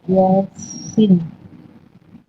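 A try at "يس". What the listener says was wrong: ইয়াসির বলছেন আপনি, আবার বলেন, বানান করেন, হ্যাঁ বানান করেন তাহলে ঠিক হয়ে যাবে।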